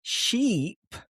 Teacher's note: sheep is a much longer, extended i sound. And in order to make this sound, you have to open up your mouth and really smile.